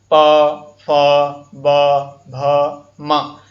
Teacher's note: आप इनके उच्चारण में दोनों होठ ऊपर और नीचे वाले हिस्से के होठ आपस में मिलती हैं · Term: ओष्ठ व्यंजन